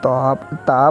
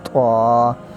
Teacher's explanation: اس کو نرم انداز سے تا پڑھنا ہے، اور دوسرا جو طوا ہے اس کو تھوڑا سا موٹا کر کے، تھوڑا سا زور لگا کے اس کو پڑھنا ہے طوا